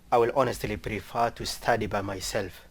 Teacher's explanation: you start with more of a monotone right you're not really varying your tone at all